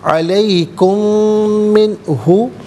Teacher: میم ساکن کو میم کے ساتھ ملا کر غننے کے ساتھ ادا کیا جائے گا · علیکم من ہو، من ہو میں نون ساکن، اس کے بعد ہو یعنی ہا حرف حلقی ہے تو نون ساکن کو اظہار کے ساتھ پڑھا جائے گا، غنہ یا اخفا نہیں کیا جائے